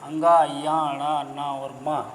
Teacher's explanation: उच्चारण करते समय हवा केवल नाक से निकलती है, नाक का स्वर आ जाता है इसमें।